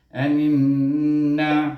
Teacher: kerana dia huruf nun bertasydid, kita kena wajib baca dengan gunnah 2 harakah · Maka kita kena idghamkan nun ini dengan huruf nun berikutnya, dan huruf nun itu juga bertasydid. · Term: wajib gunnah